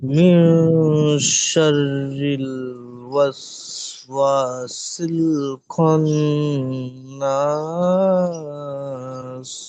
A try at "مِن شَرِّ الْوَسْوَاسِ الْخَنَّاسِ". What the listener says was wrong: ফান, এটা আর একটু ধরে রাখেন। মে, মে শাররিল ওয়াসওয়াসিল খান্নাস। খান্নাস।